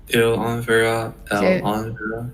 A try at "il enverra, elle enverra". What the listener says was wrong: Yeah, so you kind of putting the two words separate, but you have to put them together. So il enverra, as if there was written like this. So il enverra, elle enverra.